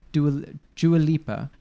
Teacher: there's no R there but they add an R sound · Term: intrusive R